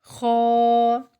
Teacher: خو پر ادا ہوگا، منہ بھر کے ادا کریں گے۔ خو ایک الف کے جتنا لمبا کھینچ کے ادا کریں گے۔